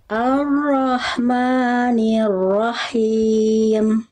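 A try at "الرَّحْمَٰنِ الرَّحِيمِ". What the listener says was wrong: tinggal diperjelas lagi rnya ya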